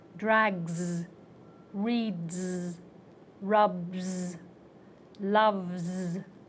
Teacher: The word ends with a consonant that has voice, so the S will take voice.